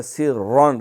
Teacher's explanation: سین پہ سیٹی ہے ، سرًا، را موٹا ہے، او علانیۃ، او علا جو عین